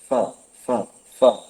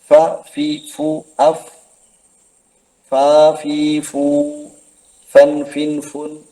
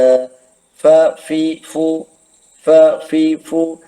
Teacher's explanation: എങ്ങനെ പറയും എവിടെ നിന്ന് ഉത്ഭവിക്കും നോക്കൂ നിങ്ങൾ ചുണ്ടിന്റെ അക്ഷരം എന്നാണ് പറഞ്ഞതെങ്കിലും ചുണ്ട് രണ്ടും പൂർണമായും ടച്ച് ആവുന്നില്ല രണ്ട് രണ്ടു ചുണ്ടുകൾ തമ്മിൽ ബന്ധിക്കുകയല്ല മറിച്ച് താഴെ ചുണ്ടും മേലെ മുൻപല്ലുകളുടെ അഗ്രവുമാണ് മേലെ മുൻപല്ലേ ആ പല്ലിലാണ് ചിത്രം നോക്കൂ നിങ്ങൾ കീഴ്ചുണ്ട് ടച്ചായത് അഫ് അഫ്